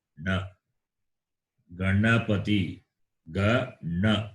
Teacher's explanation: Na is Murdanya. The tongue should touch the roof.